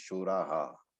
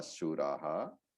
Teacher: visarga takes the pronunciation of the previous syllable, and therefore shura with a visarga becomes shuraha